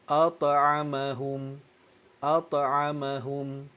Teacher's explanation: Tengok dia ada lantunan yang sedikit pada bacaan huruf ta yang berbaris sukun.